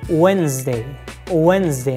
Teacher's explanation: D is not pronounced also the letter s we pronounce like z letter